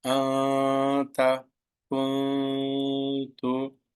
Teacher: the noon sound of tanween nun sakin must be concealed. You should not pronounce the noon sound. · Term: ikhfa